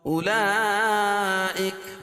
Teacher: اس کو 2 الف سے لے کر 5 الف تک اس کو کھینچ کے پڑھ سکتے ہیں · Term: مد متصل